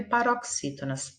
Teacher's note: O X aqui tem som de CS.